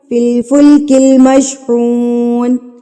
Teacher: ذریتہم، ذریتہم فی الفلک المشحون، پیش کے بعد واو ساکن ہے، اس کا مطلب ہے یہ واو مدہ کہلائے گا، تو اس کو بھی ہم نے ایک حرکت کے برابر کھینچ کے پڑھنا ہے